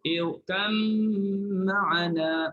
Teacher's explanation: Kalau idgham, irkam ma'ana, masukkan ba dalam mim.